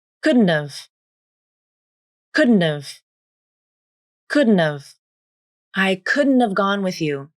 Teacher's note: the initial H consonant in have is dropped. Then, the a vowel in have is reduced to the schwa a. Now, here's where things become tricky.